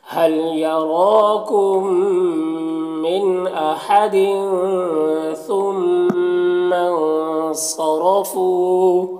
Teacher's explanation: فو میں واو مدہ ہے، 1 الف کے برابر کھینچیں گے